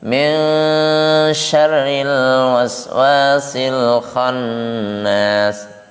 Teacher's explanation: Ya, itu salah satu contoh dari ikhfa al-ausat ya. Jadi suara samarnya ikhfa al-ausat ini larinya ke NG